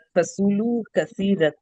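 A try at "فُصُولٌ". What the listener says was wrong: Fasulu. Can you say the i'rab properly? It is fasulu, lun or lan or what?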